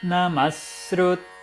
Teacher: visarga dobrando a duração do S que vem depois